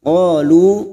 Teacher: Qalu fathah diikuti alif 2 harakat, lu duma diikuti wawu sukun 2 harakat masing-masing mat tabi'i.